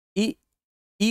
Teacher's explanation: इ ई को पढ़ने में कम समय लग रहा है लेकिन ई को पढ़ने में थोड़ा ज्यादा समय लग रहा है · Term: दीर्घ स्वर